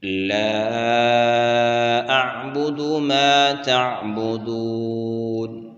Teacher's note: دال کے بعد واو مدہ ہے اور اس کو 1 الف کی مقدار کھینچ کر پڑھیں گے